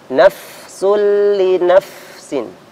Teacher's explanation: untuk fa ya sifatnya sama dengan ha tadi hamas dan rokhawa mengalirkan nafas kemudian mengalirkan suara